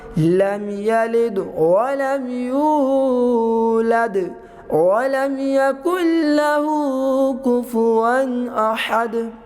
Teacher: نون ساکن کے بعد لام آیا ہے تو یہاں پر غنہ نہیں کریں گے، ہوا ادغام کے لیکن یہ غنہ نہیں کریں گے۔